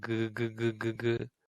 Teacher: with ga, you've already started to vibrate.